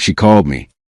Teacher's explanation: The final D in called may connect with me making the phrase sound like she called me.